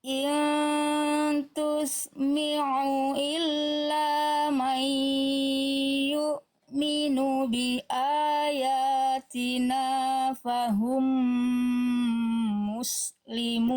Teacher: aynya sudah bagus, udah enggak jadi hamzah, tapi sengaunya masih ada sedikit. Nah, nanti tinggal dihilangkan bunyi nyirungnya, bunyi sengau hidungnya, ya.